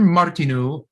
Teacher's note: this is a czech name and it just means to hold that u a little longer